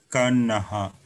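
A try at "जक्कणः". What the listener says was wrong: So this is ana, not na, ana.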